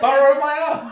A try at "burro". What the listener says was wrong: Burro. Roll your R's correctly. Burro.